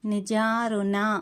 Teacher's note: ఋ పక్కన అన ఉంది కాబట్టి నాలుకను పైకి మడిచి పలకాలి